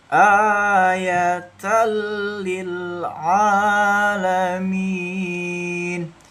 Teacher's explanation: Lebur ya. Jadi tanwinnya langsung ke huruf lam bertasdid membacanya ya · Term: idgham bila ghunah